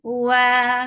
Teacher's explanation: circle your lips, make it 2 counts long